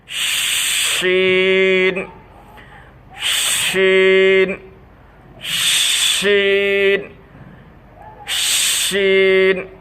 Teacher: জিহ্বার মধ্যখান তার বরাবর উপরের তালুর সাথে লাগাইয়া মুখের ভিতর আওয়াজটা ছড়াই দিয়া, মুখের ভিতর আওয়াজটা ছড়াই যাবে।